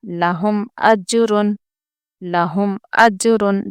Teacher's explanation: ایک میں ہو رہا ہے خلقلہ، یعنی کہ حروف خلقلہ کے 5 حروف جو ہیں قاف طا با جیم دال، وہاں سے یہاں پر جیم آیا ہے اس لیے ہم یہاں پر خلقلہ کریں گے